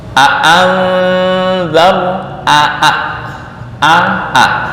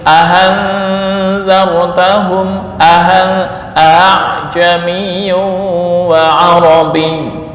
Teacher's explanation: tahkik antara dua Hamzah berarti membaca Hamzah secara sempurna